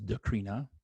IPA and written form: dəˈkɻinə (Corinna)